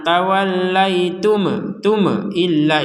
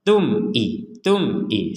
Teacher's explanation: enggak kuat berhenti di sini di sini ada mim sukun ya mim sukun ketemu Hamzah maka kita membacanya dengan jelas jelas artinya enggak ada dengung enggak ada pantulan